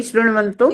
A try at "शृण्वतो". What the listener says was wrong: शृण्वतो है, वंतो नहीं है।